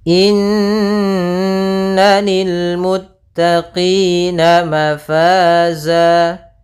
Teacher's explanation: Inna, ada bacaan gunnah, yaitu kita panjangkan 2 harokat